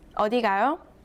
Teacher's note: read the last syllable with a rising tone